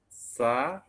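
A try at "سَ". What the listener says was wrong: Jangan ke atas Pak. Satu jari aja. Dikit aja. Sa. jadi rahang itu hanya untuk membantu. Rahang itu hanya untuk membantu. Bukan jadi jaminan ketika kita menggunakan rahang istifal, lantas bunyinya akan menjadi istifal. Karena kuncinya adalah bagaimana kita membuat aliran suara itu, ini lidah, rendah ketika istifal. Dan ketika Indonesia, A. Itu intinya. Rahang hanya membantu.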